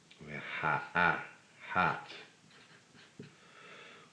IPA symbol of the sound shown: a